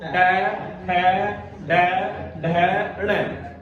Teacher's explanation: अपनी जीभ का अगला हिस्सा, जीभ का अगला हिस्सा मुड़ के और ऊपरले मसूड़ा पर, दांत का जो ऊपरला मसूड़ा है वहां टकरा होगा, मुड़ेगा।